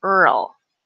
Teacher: Our tongue has to go from a very flat to a curved really quickly, Earl. So it takes a lot of effort for our tongue to move between those two sounds, between those two positions, right? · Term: RL combination